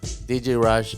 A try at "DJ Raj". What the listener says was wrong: I think you're pronouncing it like Rash. Yeah, like it's Raj. No, Raj. DJ Raj. J, not like a S-A. Like Raj.